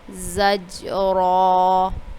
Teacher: ابھی دیکھیے ادھر را کے اوپر حرکت ہے، یعنی کہ زبر ہے تو را کو ہم پور پڑھ رہے ہیں، یہی چیز میں آپ کو بتا رہی تھی کہ یاد رکھنا ہے کہ را کے اوپر جب زبر اور پیش ہو تو را کو پور پڑھنا ہے